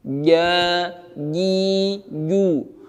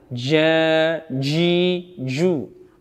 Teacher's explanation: Jadi jim tengah lidah yang dinaikkan ke langit ditempelkan, lengket kalau bisa, tetapi tidak bernafas. ketika mengucapkannya.